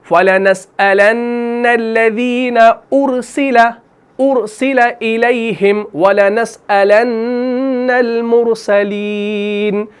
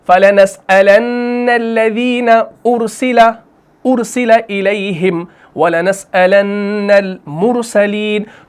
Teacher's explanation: تو وہاں پر مرسلین میں بھی را کو موٹا پڑھنا ہے اور ارسلہ میں بھی را کو موٹا پڑھنا ہے